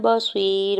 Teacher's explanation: تعملون بصیر، با کے اوپر سنگل زبر جلدی سے ادا کریں گے، یا ساکن سے پہلے صاد کے نیچے زیر ہے، یا مدہ ہو رہا ہے، دو حرکت کھینچ کے ادا کریں گے، را کے اوپر دو پیش کی تنوین ہے اور آگے آیت کا وقف ہے، تو وقف کرنے کی صورت میں را کو ساکن کر دیں گے، ٹھیک ہے۔